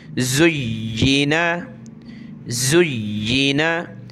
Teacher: زینا، زا یا پیش زیا زیر ی، زی نون زبرنا، یا کو سخت کریں گے تشدید کی وجہ سے، اور زا کو پڑھتے وقت دونوں دانت ملاتے ہیں یعنی زا، اس طرح سخت کرتے ہیں۔